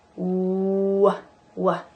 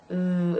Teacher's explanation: So W, w, w. You have to really tighten your lips together, w, like the oo shape, versus V, v, which uses your lip against your teeth. V, w. Okay.